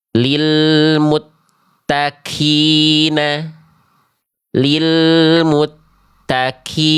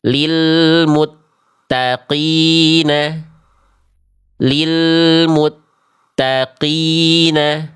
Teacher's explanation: Jadi huruf qof-nya ada percikan nafas. Enggak boleh. Itu jadinya kaf. Harusnya qof itu tanpa percikan nafas.